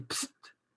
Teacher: on a 3 consonnes non voisées